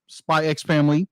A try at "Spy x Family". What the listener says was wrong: the x is silent